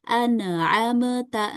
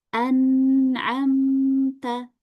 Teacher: Enggak boleh dipantul ya. Seharusnya dibacanya dengan anamta ya, sukun tanpa dipantul.